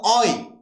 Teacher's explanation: অয়টা উচ্চারণ করলে কি লাগবে? অ লাগবে, আবার একটা ওই লাগবে। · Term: ডিপথং